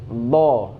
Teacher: Sedangkan do dia itu di pinggir di pinggir lidah.